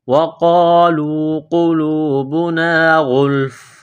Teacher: جب وقف کریں گے تو فا کو سائلنٹ کریں گے